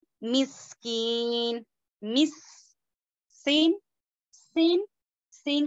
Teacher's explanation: دوسرا جو ہے یہ سیٹی والا حرف ہے، اچھے سے سیٹی کی آواز آنی ہے